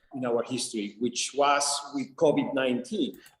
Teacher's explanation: he puts so much attention on the W sound and then he blows it up and gives it all sorts of pitch and just so much attention. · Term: function word